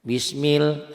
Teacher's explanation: lafaz Allahnya dibaca tipis tarkik karena sebelum lafaz Allah baris di bawah kasrah